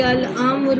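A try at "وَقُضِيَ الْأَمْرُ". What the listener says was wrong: امر را پر پیش نہیں پڑیں گی نا، آپ نے وقت جو کیا ہے.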